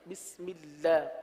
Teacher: اللہ کے لام کو باریک پڑھیں گے